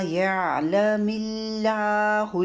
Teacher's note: اب یہاں پہ دیکھیے یعلم اللہ، اللہ کے لام سے پہلے میم کے نیچے زیر آئی ہوئی ہے، تو یہاں پہ اللہ کا لام باریک پڑھنا ہے. ٹھیک ہے، ورنہ اگر اللہ کے نام سے پہلے زبر ہو یا پیش ہو تو پھر لام کو موٹا پڑھتے ہیں، یہاں لام کو باریک پڑھنا ہے۔